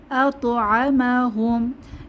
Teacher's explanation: আতমা হুম এখানে আতমা হুম এরকম হবে না আতমা হুম আত ত যেহেতু একটা কলকলার হরফ এখানে আমরা প্রতিধ্বনি করে পড়বো